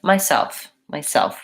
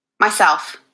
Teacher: she said myself myself with the stress on self